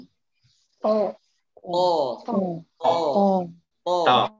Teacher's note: Jadi tebalnya bukan ada di bibir. Huruf to itu tebalnya ada di pangkal lidahnya. Pangkal lidahnya membuat huruf to itu tebal. Pangkal lidahnya naik.